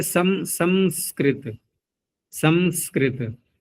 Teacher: अनुस्वार का उच्चारण मकार के रूप में करने की शैली है कहीं कहीं पर